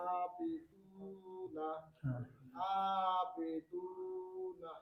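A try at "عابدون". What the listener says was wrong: মানে এখানে সমস্যাটা কি হচ্ছে বুঝতে পারতেছেন? অর্থাৎ জেরের উচ্চারণ বাংলায় একার না রসিকার, বুঝতে পারতেছেন? যেমন আমি এখন পড়ি, আপনার পড়াটাই আবেদুনা, আমার পড়া কি ঠিক আছে?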